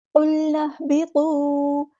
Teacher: واؤ مد آ گیا تو الف کے برابر لمبا کریں گے، مد اصلی کریں گے